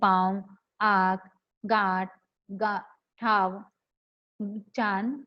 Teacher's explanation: अनुनासिक के उच्चारण में ध्वनि जो है वो मुख के साथ साथ नासिका द्वार को, यानी हमारे नाक को छूकर, स्पर्श कर कर निकलती है। अर्थात अनुनासिक की ध्वनि नाक और मुख दोनों से साथ साथ निकलती है।